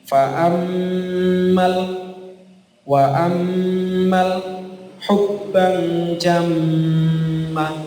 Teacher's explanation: Kami ulangi lagi untuk gunnah, mim tasydid dan nun tasydid. Nah, itu dibaca setidaknya 2 harokat atau lebih.